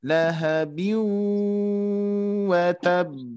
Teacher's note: biunya ditekan kembali ya dengan jarak 3 ketukan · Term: dengungannya